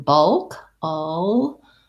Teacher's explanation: And then bulk, all. Again, it's a schwa before a dark L that kind of has a schwa. Bulk, all. So visualizing it as an ull.